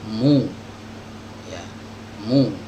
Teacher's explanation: keluar dari dua bibir tinggal dimonyongkan aja karena dia diharokati dengan harokat dhammah. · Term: huruf mim